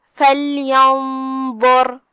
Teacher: جو کہ حرف الضا حروف التفخیم میں سے ہے تو غنہ بھی تفخیم سے ادا کریں گے، کیونکہ غنہ اپنے اگلے والے حرف کا حکم لیتا ہے · فَلْيَنظُرْ. آخری میں را کے نیچے زیر ہے تو را کا حکم ہے ترقیق، مطلب ہم را کو ہلکے سے پڑھیں گے